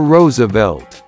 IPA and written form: ˈroʊzəvɛlt (Roosevelt)